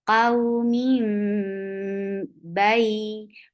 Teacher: So you are changing one sound to another. You're changing the sound of noon into mim. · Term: iqlab